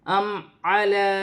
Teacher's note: الف پر کھڑی زبر ہے، ایک الف کی مقدار کھینچ کر پڑھا جائے گا. ام علی، میم ساکن ہے، میم کو حمزہ کے ساتھ ملا کر پڑھا جائے گا. لام پر کھڑی زبر ہے، ایک الف کی مقدار کھینچ کر پڑھا جائے گا.